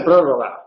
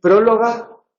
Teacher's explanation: hay una confusión ahí de la vibrante con la lateral de prórroga. Sí, ahí hay una sustitución de una consonante por otra.